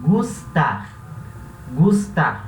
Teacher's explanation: esse S, ele não existe o S chiado como existe no português